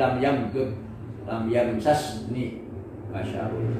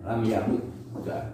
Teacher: kecenderungan orang ahli Hijaz membuka idghamnya